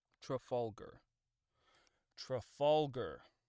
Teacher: The stress is on the second syllable. Fall. F A WL.